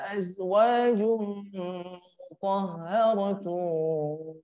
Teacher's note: Azwajum, panjangkan 2 harokat dan didengungkan. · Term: idghamnya